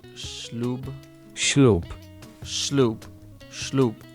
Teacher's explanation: S with the accent, again, this is like sh and shore, only much softer.